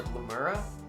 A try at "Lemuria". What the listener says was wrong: Lemuria? There's an I there.